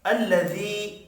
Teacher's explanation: یا مدہ ہے، ایک الف کے برابر کھینچ کر پڑھیں گے۔